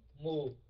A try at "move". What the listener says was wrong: Right.